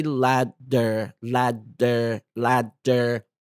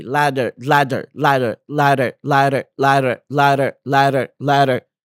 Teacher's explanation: notice how tongue lightly Taps the roof of your mouth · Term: flap T sound